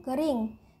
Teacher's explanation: vokal I tinggi bawah depan tak bundar